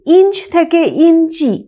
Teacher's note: অন্ত স্বরাগম, অর্থাৎ শেষে একটা স্বরবর্ণের আগম ঘটেছে